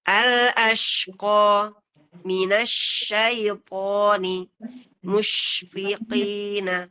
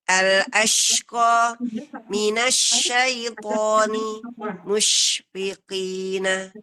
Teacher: Jadi ada tafasyi, ada juga menyembur seperti menyebar kuat ya.